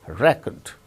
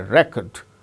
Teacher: when it is used as noun the first syllable gains stress